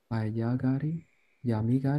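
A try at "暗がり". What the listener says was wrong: Close, close. It's ku. Kuragari.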